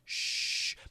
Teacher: So, we actually need to see a video here, but basically, when I do the S sound, I'm smiling. And when I do the SH, shh, my lips kind of come together